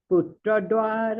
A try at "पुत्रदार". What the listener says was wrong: दार, पुत्र दार, द्वार नहीं, पुत्र दार, दार मतलब वाइफ। द्वार नहीं, अभामा, द्वार नहीं है, वो दार है, दार।